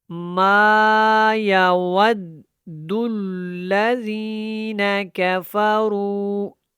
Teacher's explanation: واو کو دال کے ساتھ ہم نے ملایا ہے اور دال کو پھر لام کے ساتھ ملانا ہے۔ یہ دونوں شدات ہیں تو یہاں پہ تھوڑا پختگی کے ساتھ آپ نے ادا کرنا ہے۔